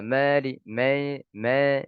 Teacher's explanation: mencampurkan alif dengan sedikit huruf ya sehingga menjadi seperti suara alif yang dibaca imalah